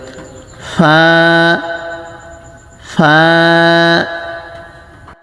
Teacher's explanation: ফা, এক আলিফ পরিমাণ টান হবে, উচ্চারণের শুরুতে উপরের দাঁতের আগা নিচে ঠোঁটের পেটে লাগবে।